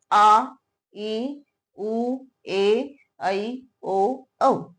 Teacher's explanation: दीर्घ स्वर वो स्वर हैं जो ह्रस्व स्वर से 2 गुना अधिक समय लेते हैं बोलने में। जब हम इनका उच्चारण करते हैं तो ह्रस्व से दुगुना समय इसमें लगता है।